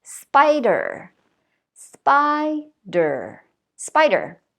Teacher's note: So the rule is that usually, if it's a noun and it has two syllables, the word stress is usually on the first syllable. And you want to think about raising your voice a little bit to make that stress on the first syllable, as in spider, spider, spider.